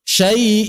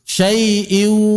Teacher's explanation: Kalau kita tutup mulut ada suara gunah di rongga hidung.